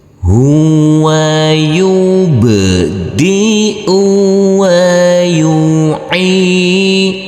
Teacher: Huruf ain di sini harus kita baca panjang dengan panjang 2 harokat. Karena huruf ain ini Huruf ain yang berkasroh i bertemu dengan huruf ya sukun.